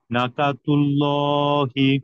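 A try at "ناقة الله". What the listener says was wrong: না নাতে টান হবে স্যার না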